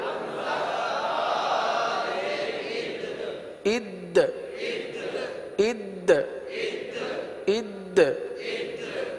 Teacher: اب دیکھیے دال ہے، دال حروف قلقلہ میں سے ہے. دال کو جماؤں کے ساتھ ادا کرتے ہوئے یہاں پر قلقلہ بھی ادا کرنا ہے